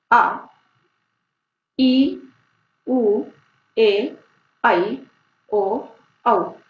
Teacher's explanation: इनके उच्चारण में ह्रस्व स्वर से 2 गुना दुगना समय लगता है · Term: दीर्घ स्वर